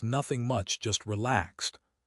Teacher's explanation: You want your voice to stay level or go up slightly at the end to sound breezy and happy.